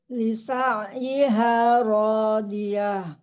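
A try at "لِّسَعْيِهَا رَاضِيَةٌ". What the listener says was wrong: Tapi hati-hati, catatan juga jangan ditebalkan karena huruf H bukan huruf tebal. Jadi tetap dia tipis ya. D-nya yang tebal, jangan ke bawah tebal karena kita D-nya itu tebal. Radiyah. Ya, jangan radiyah. Ya, jangan diangkat ya. Jangan tebal hanya. Kalau kita ngangkat ya, hanya tebal. Radiyah.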